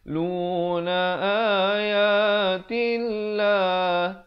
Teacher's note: Lafzul jalalah dibaca nipis 2 harakat.